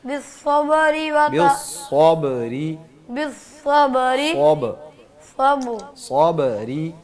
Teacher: صاد ہے, اس کی آواز سیٹی کے ساتھ موٹی ہوگی